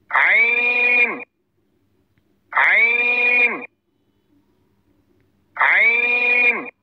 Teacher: মাখরাজ কণ্ঠনালীর শুরু হইতে উচ্চারিত হয় হামজাহ হামজাহ হামজাহ হা কণ্ঠনালীর মধ্যখান হইতে উচ্চারিত হয়